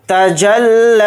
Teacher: لام کے اوپر کھڑا زبر ہے، لام کو تھوڑا کھینچ کر پڑھیں گے